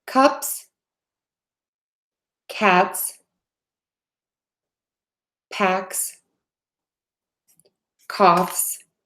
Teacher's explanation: add that voiceless s onto those words